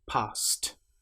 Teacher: the T is almost like an extra consonant that links directly to the consonant before it